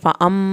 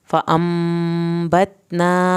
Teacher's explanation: मीम छोटी मीम के फ़ौरन बाद बा आ गया है, हम एक अलिफ के बराबर देर लगाएंगे। फ़अंबतना, ता को हिलाना नहीं है।